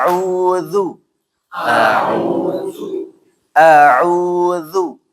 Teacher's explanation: jangan sampai dibaca tafkhim atau tebal